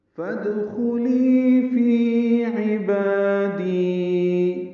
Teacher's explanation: فا کو دال سے ملانا ہے، اصل میں فا اور ادخلی ہے ، دال ساکن ہے، اس پہ قلقلہ ہے، خا پر ہے،